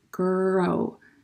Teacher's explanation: when i'm saying the word grow you can see like my lips are not rounding